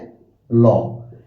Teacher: এখন পার্ষিক বর্ণ বলার কারণ কি? আমরা যখন ল বর্ণটা উচ্চারণ করি তখন জিহ্বার দুই পাশ থেকে দ্রুত গতিতে বাতাস বের হয়। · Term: পার্শ্বিক বর্ণ